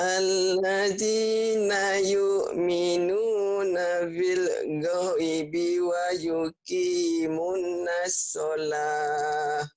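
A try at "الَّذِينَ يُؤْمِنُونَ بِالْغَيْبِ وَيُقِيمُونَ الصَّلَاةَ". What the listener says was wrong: Bukan bil goibi, ini lin namanya, diptong. Laula andaikan kau datang, jangan andaikan. Oh iya, orang sana kata ke pantai ya, jangan ke pantai, ke pantai.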